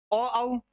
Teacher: ये कंठ और होठ दोनों के योगदान से बोले जाते हैं